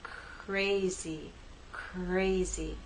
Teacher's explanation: as we begin the r we don't have our voice but as we move into a now you'll hear vibration